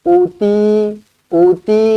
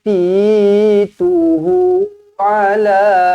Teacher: U panjang, Ti panjang, Hu pun panjang, 2 harakat. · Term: Mad badal